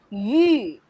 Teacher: the long E through a pursed lips